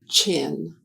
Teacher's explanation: To make the sound of the consonant digraph ch, ch, the air is blocked by the tongue on the ridge behind the teeth. As the sound is made, the tongue moves back to the hard palate.